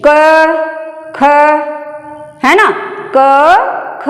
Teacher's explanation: क ख इसे हम जब बोलते हैं तो हमारी स्वर तंत्रियां झंकृत नहीं होती हैं, यानी गले पे जोर नहीं पड़ता है। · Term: अघोष